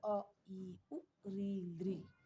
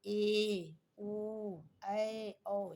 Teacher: ह्रस्व स्वर या मूल स्वर की अपेक्षा या लघु स्वर की अपेक्षा दीर्घ स्वर के लिए हमें दोगुना समय का उपयोग करना पड़ता है